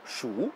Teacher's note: si vous le prononcez au 3e ton, Shu, cela veut dire compter et cela devient un verbe